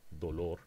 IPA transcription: doloɾ